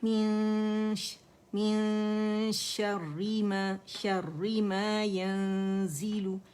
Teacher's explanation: ٹھیک ہے، من شر ما ينزل من شر ما ينزل یا ین ہے، ٹھیک ہے، نون نہیں ادا ہوگا، چھپائیں گے، زا کے مخرج پہ رائٹ اوے جائیں گے، زائی ہے نا، اور پھر اس کو ٹچ نہیں کریں گے، لیکن اخفا کمپلیٹ کرنے کے بعد اخفا تو رائٹ اوے جب اس پہ جاتے ہیں ریٹین کرتے ہوئے جاتے ہیں، ٹھیک ہے.